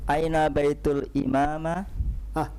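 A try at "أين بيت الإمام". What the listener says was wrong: Kok tiba-tiba jadi imamah? Di situ udah ada kasrah di situ. Ada kasrah, ada sedalik atau fathah di situ? Kasrah. الإمامي kenapa dia majrur? Lihat baitul imami.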